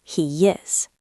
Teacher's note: We put a little Y in the middle.